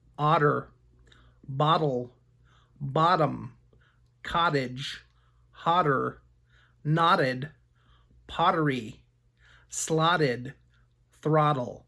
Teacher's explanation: the letters Ott together can sound like the short o ah followed by a D sound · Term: relaxed pronunciation